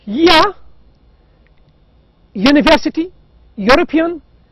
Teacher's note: in the word european or university the u is pronounced as you as ya